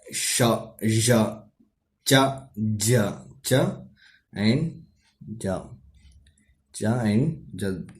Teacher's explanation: these sounds are produced by the blade of the tongue touching the back of alveolar. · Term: Postal alveolar